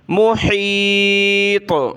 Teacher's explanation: پر سکون جزم آیا تو قلقلہ ہوگا وقف کی صورت میں